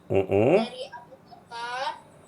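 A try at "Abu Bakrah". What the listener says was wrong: Dari Abu Bakroh, bukan Bakarna. Abu Bakroh.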